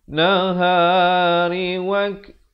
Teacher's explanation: ada hamasnya, bunyi kaf yang bertanda mati